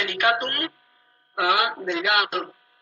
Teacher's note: en este caso lo que cayó es la vocal pretónica, por eso desapareció. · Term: caída de una vocal pretónica